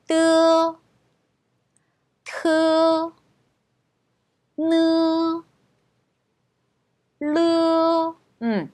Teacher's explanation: 혀 끝 소리 같은 경우는 저희가 혓바닥을 입 천장에 붙였다 튕겨주면서 발음이 나요